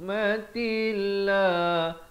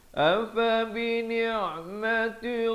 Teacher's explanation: Lafz jalalah dibaca nipis.